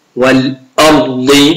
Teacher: الراء حرف مفخم والضاد كذلك